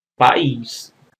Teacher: se você não puser assento você pronuncia o de tombo pais se você puser o assento aí você tem o iato país